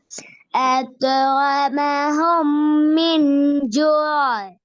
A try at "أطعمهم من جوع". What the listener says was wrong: இன்னும் கொஞ்சம் ஒரு செகண்ட் நிப்பாட்டி 2 செகண்ட் நிட்டணும்.